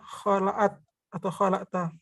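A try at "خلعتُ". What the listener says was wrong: Nah, kalau di sini bukan kholata, tapi kholatu. Berarti kholatu. Kholatu.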